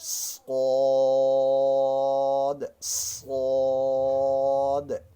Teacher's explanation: صاد میں بھی سیٹی کی سی آواز آ جائے گی، زبان کی نوک سامنے والے دانتوں کی جڑ کے ساتھ لگے گی، صاد، اور درمیان سے زبان اوپر کی طرف اٹھ جائے گی، تالو کی طرف، صاد، صاد۔